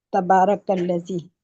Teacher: تا پہ زبر ہے، اس کو ہم لمبا نہیں کریں گے. با کے اوپر کھڑی زبر ہے، اس کو 2 حرکت دیں گے